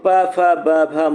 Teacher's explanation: प वर्ग के अंतर्गत आने वाले सभी वर्ड क्या होते हैं? ओष्ठ होते हैं। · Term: ओष्ठ ध्वनियाँ